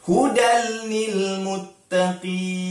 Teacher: Tanwin bertemu dengan lam. Hukumnya, ya, pandai idgham bila gunnah, kita masukkan hudal. Masukkan tanpa dengung.